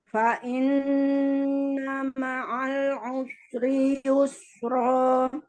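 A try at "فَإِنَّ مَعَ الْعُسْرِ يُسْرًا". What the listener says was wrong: Lam sukunnya dialirkan dulu ya. Fa inna ma'al usri yusra. Nah, kalau kita tunaikan sifat-sifatnya, maka bacaannya itu juga benar antara makhraj dan sifatnya ya. Jadi jangan sampai nggak selesai, harokat tidak boleh nggak selesai. Jangan usri yusra, usri yusra. Jadi ada sinnya ngalir dulu, nya dhammahnya sempurna ya.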